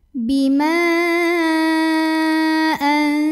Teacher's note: mim yang fathah boleh kita panjangkan 4 atau 5 harokat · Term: mad jaiz munfasil